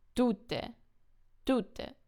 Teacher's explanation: tute, the person, is stressed on the first syllable